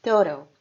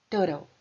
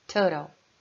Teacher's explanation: Total é a palavra total que você ouviu que eu falei com um T mais suave, né? Igual quando a gente fala water.